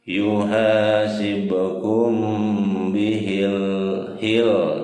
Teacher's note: Nah, ini ada hukumnya, hukum mati mim mati ketemu ba, apa hukum tajwidnya? Hukumnya adalah ikhfa safawi ya. Jadi mimnya ditahan dua harokat ya.